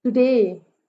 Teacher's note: टू पे कोई stress नहीं है, डे पे स्ट्रेस है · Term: आयम्बिक मीटर